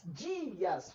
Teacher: o I agora é forte, virou vogal. O A é forte, vogal. Então isso é um hiato.